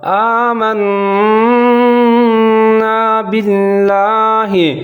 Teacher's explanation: آگے ہے آمنا باللہ، یہاں نون کے اوپر شد ہے تو یہاں میں گنہ کروں گا اور آواز کو ناک کے اندر لے جاؤں گا